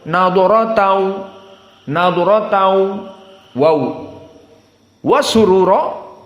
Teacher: maka tidak ada gunnah sehingga makhrajnya dari syafatan dan tidak ada dua harakah. Maka kita baca yang ringkas dulu, nadratan wa surura, seperti itu. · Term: idgham bila gunnah